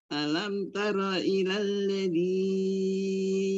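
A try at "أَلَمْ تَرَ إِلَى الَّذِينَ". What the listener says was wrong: jangan terlalu panjang dzinnya, dua harokat saja. kepanjangan aladzinnya, dzinnya kepanjangan.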